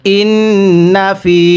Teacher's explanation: নুন জবর না ইন্না ফাইয়াজের ফি এক আলিফ টান দিব। জেরের পরে ইয়া সাকিন এক আলিফ টানতে হয়